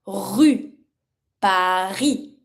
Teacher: the R is not rolled like rrr or rrr. It's really from the throat. It's a really rough sound.